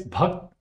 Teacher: The first syllable is bh, the aspirated bh